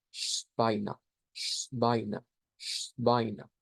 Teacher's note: Todo esto se convierte en la SH, luego esta es la W, se vuelve V, diptongo EI, igual que en la de Dyna, se vuelve ahí.